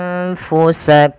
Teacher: ditahan suara dengungannya sepanjang dua harakat